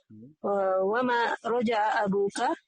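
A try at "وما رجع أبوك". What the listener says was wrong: pertanyaan intonasinya. Wa ma roja abuka.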